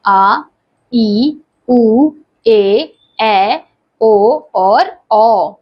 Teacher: इन स्वरों के उच्चारण में ह्रस्व स्वर से दुगना समय लगता है। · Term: दीर्घ स्वर